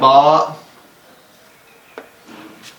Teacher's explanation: बा दोनों होंठों के तर हिस्से को हम जाके जब मिलाएंगे तो इंशाल्लाह हमारा हर्फ जो है वो बा अदा हो जाएगा।